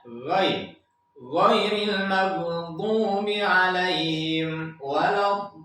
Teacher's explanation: Ada pangkal tenggorokan, ada tengah tenggorokan dan ada ujung tenggorokan. Yang ujung tenggorokan itu hurufnya adalah ghain.